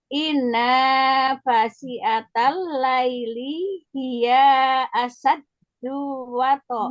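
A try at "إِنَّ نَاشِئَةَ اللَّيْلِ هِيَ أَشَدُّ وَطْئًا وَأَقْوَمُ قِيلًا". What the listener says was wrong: Hiya asyaddu. Ya-nya tidak panjangnya. Hiya asyaddu.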